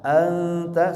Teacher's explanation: suara nun yang dibaca ikhfa karena di depannya ada huruf ikhfa